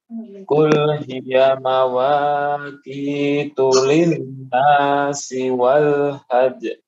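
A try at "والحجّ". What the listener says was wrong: Wal hajj. Ditahan, Pak. Wal hajj. Ya, hampir sama dengan al-haqq. Tahan.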